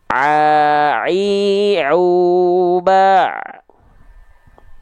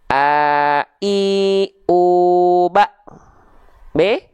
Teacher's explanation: Tengah tenggorokan ya, ain.